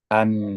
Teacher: hidung atau bahasa Arabnya itu kisyum nah jadi kita ulang lagi huruf nun itu ujung lidah bertemu ke langit-langit gusi ketika dia sudah sampai ke langit-langit gusi suaranya terhenti namun ada suara yang mengalir ke rongga hidung